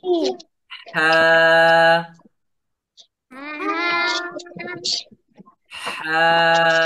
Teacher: একটু গলা চেপে বাতাস বাহির করতে হবে, এই যে হলকের মাঝখান থেকে।